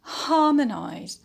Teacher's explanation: The primary stress will fall on ha, on the antepenult.